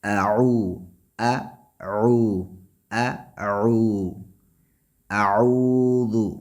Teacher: حمزہ حلق کے آخری حصے سے اور عین یہ درمیانی حصے سے نچوڑ کر نکلتا ہے، گلے میں آ کے جیسے کوئی گلوگیر ہوتی ہے آواز، اس طریقے سے عین کا مخرج ہے۔